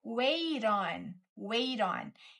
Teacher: o T tá assumindo o som do D · Wait on, isso aqui a gente fala junto num bloco só.